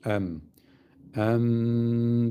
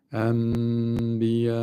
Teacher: Şu nunu sakin nunu mime çeviriyoruz. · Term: iklap